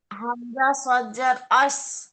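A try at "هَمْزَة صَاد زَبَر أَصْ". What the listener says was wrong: আস। সৎটা উচ্চারণ করুন, হামজা সৎ যাবার আস।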